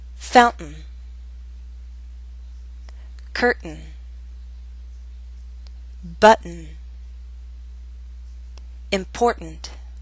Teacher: We use a glottal stop before the sound n. That's an unstressed N sound.